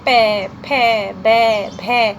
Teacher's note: इन सभी में हमारे होठ हैं वो स्पर्श कर रहे हैं, इस कारण से इनको ओष्ठ्य ध्वनि माना जाएगा।